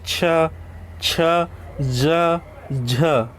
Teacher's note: ठीक है, हल्का सा इसमें संघर्ष महसूस होगा इन शब्दों का जो वर्णों का उच्चारण करते समय। ठीक है, जीभ जो स्पर्श भी करेगा और संघर्ष भी करेगा उच्चारण करते समय, मुख से वायु निकलते समय। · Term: स्पर्शी संघर्ष व्यंजन